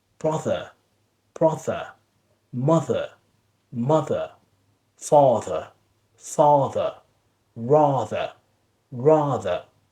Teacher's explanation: You will feel like kind of a vibration in your vocal cords, a vibration in your tongue. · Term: voice first part